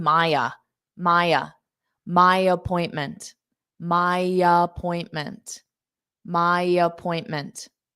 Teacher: you can take that my and add a ya in front of appointment to smooth it out.